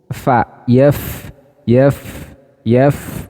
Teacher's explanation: Nah itu ada hembusan napas kalau kita Letakkan tangan kita di depan mulut maka ada terasa hembusan nafas yang keluar